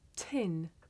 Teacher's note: did you notice how the puff of air at the beginning of tin makes the paper move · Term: voiceless sound